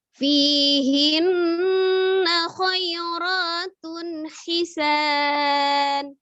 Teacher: Fi ada ya sukun sebelumnya kasroh, maka dia 2 juga fi-nya. Hinna ada nun tasdid wajib gunnahnya, wajib dengung, ditekan, ditahan 2-3, suaranya masukkan ke al-khaisum, rongga hidung ya.